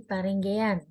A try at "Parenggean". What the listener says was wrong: Lebih ditekan, Parenggean. Parenggean. ketika ditekan itu, wah menarik ya bahasanya. Padahal kalau misalkan perkenalan, saya Nanang Sugiarto, saya berasal dari misalkan Jawa Timur gitu kan.